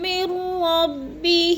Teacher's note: میم کو را کے ساتھ ملا کے پڑھنا ہے، یعنی ادغام کرنا ہے، درمیان والا نون ساکن نہیں پڑھا جائے گا